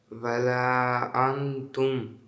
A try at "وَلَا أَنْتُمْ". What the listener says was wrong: Ва. Ва не говори. У. Вот так сделай. Не. Вот так. Ва. Ва не должно быть. Ва нету. Ва есть. Ва. Валя.